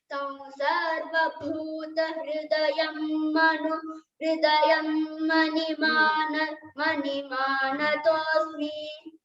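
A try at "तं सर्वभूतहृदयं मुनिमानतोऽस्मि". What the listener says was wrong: Mani no, muni.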